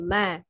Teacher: bibir atas bagian luar harus bertemu bertemu berarti menempel ya Nah ini adalah makhraj huruf mim keluarnya dari pertemuan dua bibir luar atas dan bawah